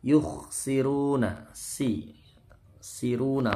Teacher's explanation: Yukhsiruna, siruna, runya ini ru tebal, tafkhim, panjang, karena disukunkan ini menjadi mat arid lis sukun.